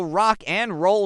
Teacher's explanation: The D in and is almost always dropped. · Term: elision